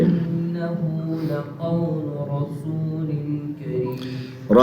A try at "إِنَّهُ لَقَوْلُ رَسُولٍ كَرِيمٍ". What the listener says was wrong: رسول ان پہ آ کے یہ غلطی آتی ہے کہ را کو موٹا کرتے کرتے سین کو موٹا کر دیا جاتا ہے، رسول، یہ رسول غلط ہے، رسول غلط ہے، بات سمجھ آ رہی ہے؟ اب یہ رسول کا لفظ چاہے اذان میں ہو، قرآن میں ہو، حدیث میں ہو، یہ اس کو دھیان سے پڑھنا ہے، سمجھا جی؟